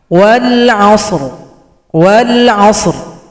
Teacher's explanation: Kalau berhenti ra-nya disukunkan berikan bunyi vokal.